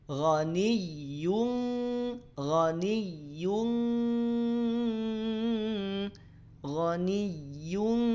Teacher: berarti samarnya sempurna dengungnya kuat ya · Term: ikhfa